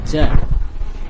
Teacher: pertama letak-letak lidah yang menempelkan langit-langit gila tidak tepat atau Hai posisinya lebih depan daripada tempat yang sebenarnya maka biasanya keluar nafas contohnya ja ini kurang ke dalam atau kurang kuat ya sudah